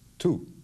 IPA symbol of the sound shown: t